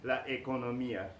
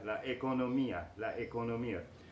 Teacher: Economy in Spanish is la economía, with the accent on the I.